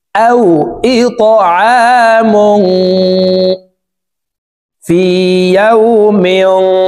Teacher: মুং ইকফা গুন্না তানউইনের পর ইকফার হরফ ফা আসছে এই কারণে এই তানউইন ওয়ালা মিমটি নাকের ভিতরে লুকাইয়া গুন্নার সহিত পড়ব